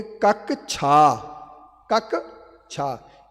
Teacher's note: उस संयुक्त वर्ण के पहले अक्षर को 2 बार बोलना पड़ता है